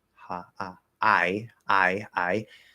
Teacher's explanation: the unmerged ah, like in hot, would be merging with the start of I, which would mean that I would now probably be said like ha, ah, I.